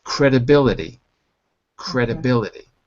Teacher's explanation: t sound but at least in my accent it's credibility D the T softens to a d so if you're going for an American accent credibility credibility okay